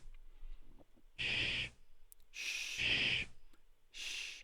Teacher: notice that for this type of sound the front part of the tongue is in a raised position against the roof of the mouth and air passes through the constricted opening